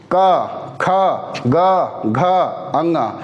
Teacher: इसको जैसे उच्चारित करेंगे ना हमारा कंठ एक्टिव हो जाता है और सारा प्रेशर कंठ के थ्रू बाहर आता है